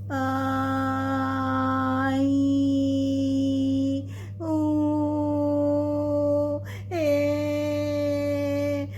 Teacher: जब हम चंद्रबिंदु वाले शब्द बोलते हैं ना तो आवाज नाक और मुंह दोनों से एक साथ निकलती है। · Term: अनुनासिक